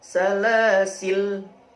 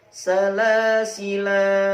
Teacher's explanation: Jika dibaca sebagai penghubung (wasal), ' la' dibaca pendek. Jika dibaca dengan tanda baca (waqaf), 'la' dapat dibaca sebagai sukun atau satu alif panjang.